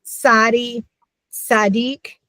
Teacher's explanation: We're used to the ts. We just don't usually have it at the beginning of a word